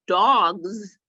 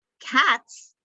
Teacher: They're both spelled with an S on the end, but one has a Z sound and one has the S sound on the end.